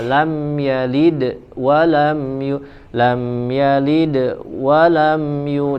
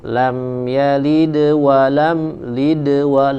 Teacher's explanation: boleh ya karena harus mengalir lam yalid wa lam Lid wa langsung disambung kepada huruf yang selanjutnya tidak boleh ada jeda